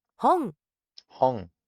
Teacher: you hear the tongue going into the back of the roof of the mouth, up against the throat.